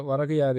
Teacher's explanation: முதல் சொல்லின் இறுதியில் உள்ள கூ எனும் எழுத்து கீ என ஒழிக்கிறது. அதுவும் முழுமையாக ஒரு மாத்திரை அளவில் ஒளிக்காமல் அரை மாத்திரை அளவாக குறைந்து ஒழிக்கிறது. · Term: குற்றியல் இகரம்